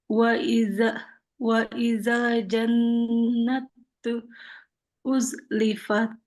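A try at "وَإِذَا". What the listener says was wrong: Yang zalnya ini jangan sampai ada suara desis. Jangan wa izal, wa izal, wa izal.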